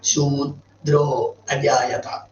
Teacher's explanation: ദുരോഷ്ഠ്യം എന്നൊരു വാക്കുണ്ടത്. അതായത് ശൂദ്രോ, ഷൂ ചുണ്ടുകൂട്ടി, ദ്രോ ചുണ്ടുകൂട്ടി. അതിന് രണ്ടിനും കൂടിയിട്ട് ഒറ്റ ചുണ്ടുകൂട്ടിൽ പോരാ എന്നാണ് ഏറ്റവും ശാസ്ത്രീയമായിട്ട് ഉച്ചരിക്കുമ്പോൾ.